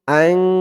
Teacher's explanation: নুন সাকিনের পরে ইকফার 15 হরফের এক হরফ তা আসছে আন নাকের ভিতরে লুকিয়ে গুন্না করে পড়তে হবে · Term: ইকফা গুন্নাহ